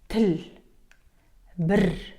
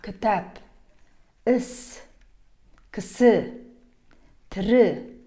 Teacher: это гласный переднего ряда, неогубленный и краткий. Он похож на русский звук И, но произносится короче, менее напряженно, язык расположен чуть ниже и ближе к центру рта.